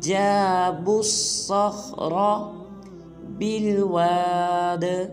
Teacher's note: صاد اور خا اور آخر میں را کو پر ادا کریں گے